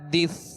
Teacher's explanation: سا کو ساکن کر دیا تو حدث، سا اس کو سیٹی کی آواز پیدا نہ ہو، نرمی سے ادا ہو